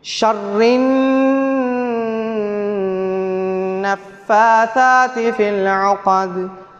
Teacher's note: பாருங்க, சுக்குன் செய்யப்பட்ட நூனுக்கு பின்னால ஷீன் வந்திக்குது, இஹ்ஃபாவுடைய எழுத்து. அப்போ சுக்குன் செய்யப்பட்ட நூனை மறைச்சி ஒன்றா செஞ்சு ஓத வேண்டும். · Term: இஹ்ஃபாவுடைய சட்டம்